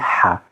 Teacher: the free flow of air with that contracted pharynx, like it's voiceless. It's a free flow of air without making use of our vocal cords.